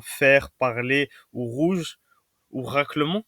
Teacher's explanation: il faut bien comprendre que c'est un petit raclement de gorge